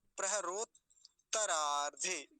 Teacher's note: दोनों का उच्चारण हो जाना चाहिए, दोनों तकार का